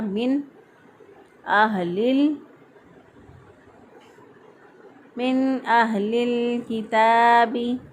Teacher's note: लाम साकिन हरफ को पीछे वाले लाम के साथ मिला दिया , हा को हमने अदा किया अक्सर हलक से, क्योंकि ये